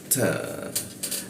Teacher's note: mata ujung lidah bertemu gigi huruf ta